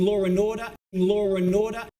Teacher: the additional r sound which is inserted in England and Australia to keep apart the vowel of four and a following vowel